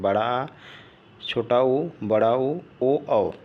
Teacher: जीवा पीछे की ओर भागती है, उन्हें पश्च स्वर कहते हैं